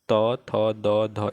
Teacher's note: त थ द ध, इसको बोलते हैं दंत्य